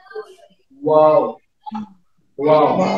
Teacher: वाव को अदा करने के लिए आप होठों को गोल करते हैं।